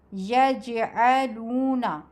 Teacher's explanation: اس میں جیم ساکن پر آواز ہلکی سی اچھلتی ہے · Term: قلقلہ